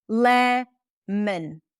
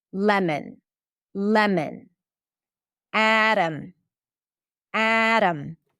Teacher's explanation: it sounds just like the o is reduced to uh or like you are skipping the vowel altogether. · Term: the schwa